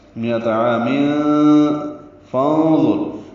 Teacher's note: تنوین کے بعد فا آنے کی وجہ سے اخفا ہوگا